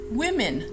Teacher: We do know that it's the same sound for both vowels